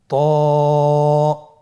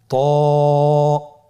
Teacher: জিহ্বার আগা, সামনের উপরের 2 দাঁতের গোড়ার সঙ্গে লাগিয়ে উচ্চারিত হয়।